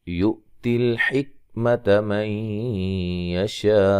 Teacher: حمزہ کو جھٹکے سے ادا کرنا ہے، حمزہ ساکن ہے